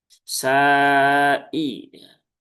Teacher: sinnya panjang ya. Panjang 4 atau 5 harokat. Sa'i ya. Jangan juga sai ya.